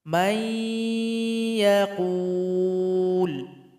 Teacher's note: Perhatikan contoh di sini nun sukun berjumpa dengan ya, maka mesti dibaca idgham. Nun sukun ini mesti digabung kepada huruf ya dan mesti didengungkan.